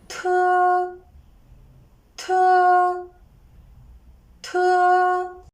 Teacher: Its position and manner of articulation are the same as those of de, but it is aspirated. You can feel a puff when you pronounce te.